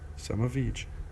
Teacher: So in connected speech, in fast speech, we change the sound a and of into schwa, but we keep the v sound because the following word, the word each, starts with a vowel. Some of each, v is pronounced here.